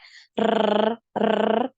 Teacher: takrir itu getaran ya getaran dari huruf ro yang ini ya r r nah ini itu adalah takrir Nah